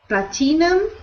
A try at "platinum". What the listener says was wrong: So we pronounce that word with no I sound. We ignore the I. We don't pronounce it. We say platinum. Platinum.